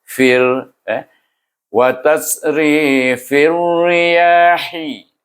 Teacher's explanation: huruf fa baris bawah itu diidghamkan dengan huruf ra, iaitu baris bawah. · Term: idgham samsi